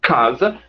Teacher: som p bom e quando você diz casa você percebe que a oclusão começa lá no fim lá na parte mais posterior bem próximo ao véu palatino com a língua recuada o dorso da língua contato o mais para trás possível para